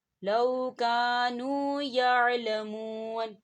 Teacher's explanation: واو ساکن ہے، واو ساکن سے پہلے پیش ہے، تو یہاں 2 حرکت کے برابر کھینچ کے پڑھیں گے